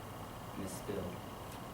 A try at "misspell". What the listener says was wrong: Miss what? Yes, you don't need the ED.